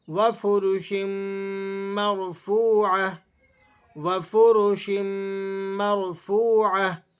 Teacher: را ساکن ہے، لیکن اس سے پہلے والے حرف پر زبر ہے، تو اس لیے آپ نے اس کا اعتبار کرتے ہوئے را کو موٹا پڑھنا ہے۔ واو مدہ کو یہاں کھینچ کر پڑھا جائے گا، وفرش مرفوعة۔